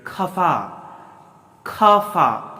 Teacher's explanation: ख गले से आना चाहिए, दांत से नहीं